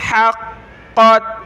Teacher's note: قاف کو موٹا کریں اور جمع کر پڑھیں شد کی وجہ سے